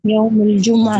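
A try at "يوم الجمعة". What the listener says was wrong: Ya, kemudian sebagai faedah, Yaumul Jum'ah itu salah pengucapannya. Yang benar itu Yaumul Jumu'ah. Yaumul Jumu'ah. Mimnya itu di dhammah. Mimnya itu di dhammah. Yaumul Jumu'ah.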